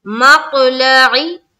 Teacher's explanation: ٹھیک ہے, عین کے نیچے زیر کی حرکت ہے, زیر کو جلدی پڑھیں, تھوڑا بھی نہ کھینچے, معروف پڑھیں, مجہول آواز سے بچے